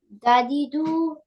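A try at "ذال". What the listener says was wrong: not. This is not dal. This is sister of dal with dot.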